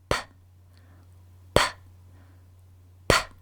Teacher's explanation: To make the letter P sound, your lips will be clasped together and then you'll let out a puff of air